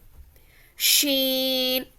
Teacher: زبان کا بیچ والا حصہ اوپر بیچ کے تالو سے لگے تو شین ادا ہوتا ہے